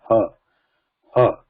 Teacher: It's also mahaprana, a lot of breath, and there is a vibration when you say ha. Nada is there.